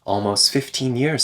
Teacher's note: the T disappears between S and F